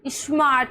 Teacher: स्मार्ट स्मार्ट में दंतन्य श पढ़ रहे हैं।